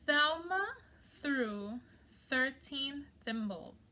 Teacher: what you are hearing is soft okay or unvoiced th